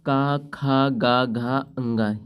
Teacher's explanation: ये भैया सारे वर्ण, 5 वर्ण ये कंठ से बोले जाते हैं।